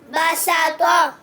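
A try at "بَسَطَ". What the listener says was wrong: बसत। तो मोटी आवाज़ है, ता बारीक आवाज़ है, तो को मोटा पढ़ेंगे। बसत।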